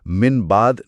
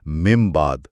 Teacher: ہونٹوں کو نرمی سے ملا کر مم بعد پڑھتے ہیں اور میم کی آواز میں ایک گونج پیدا کرتے ہیں۔ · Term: اقلاب